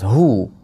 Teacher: Hu deb ham cho'zib qo'ymaymiz, faqat dommanigina bildiramiz.